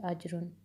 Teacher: جیم کی آواز پلٹ کے آنی چاہیے